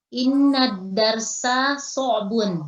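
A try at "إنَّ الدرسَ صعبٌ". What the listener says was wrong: Masya Allah, betul.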